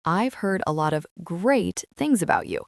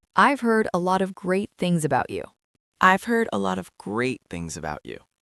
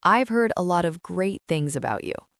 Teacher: The stress goes on the word great.